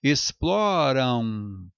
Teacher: Então esse AM é um ditongo decrescente nasal